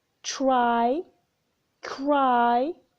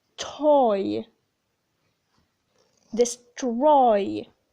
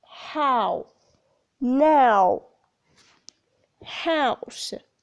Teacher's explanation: there is a glide or a movement from one vowel to another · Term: diphthong